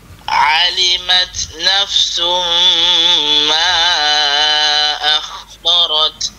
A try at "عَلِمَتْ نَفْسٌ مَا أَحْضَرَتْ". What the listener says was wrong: أح huruf ح itu bagi keluar angin yang licin eh? Jangan bagi sangkut.